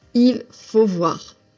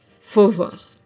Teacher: We tend to drop the il completely and say faut.